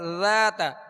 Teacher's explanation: ذال کو نرمی کے ساتھ ادا کریں گے، اس میں سختی کی آواز پیدا نہ ہو اور باریک پڑھیں گے.